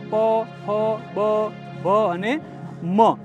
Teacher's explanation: હોઠથી જે ધ્વનિઓ બોલાય છે એને આપણે ઓષ્ટ ધ્વનિઓ કહીએ છીએ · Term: ઓષ્ઠ ધ્વનિઓ